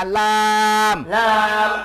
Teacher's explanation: জিহ্বার আগার কিনারা সামনের উপরে একপাশে দাঁতের গোড়ার সঙ্গে লাগাইয়া লাম